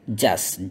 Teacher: kalau kita ngomong lebih lancar biasanya T we don't pronounce it karena dia akan membuat agak kaku. So kita hilangkan.